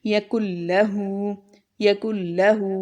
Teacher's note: ٹھیک ہے، یہ ہمارے پاس یرملون میں سے لام را ہے، جن دو حروف پر ہم ادغام تو کریں گے لیکن غنہ نہیں کریں گے